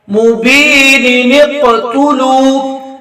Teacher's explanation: قاف ساکن پر قلقلہ کیا جائے گا